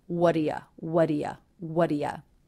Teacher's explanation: in the word do, the oo vowel is reduced to the schwa. This is the same as in the word you.